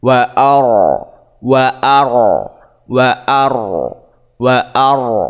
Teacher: Jadi cara bacanya ialah ro yang dibaca tafkim atau ro tebal.